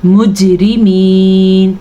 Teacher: را کو باریکی سے پڑھیں گے اور یا مدہ کے ساتھ اس کو ادا کریں گے